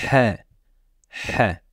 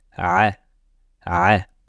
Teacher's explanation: mais la lettre h, au moment de la prononcer, de l'air va sortir de notre bouche.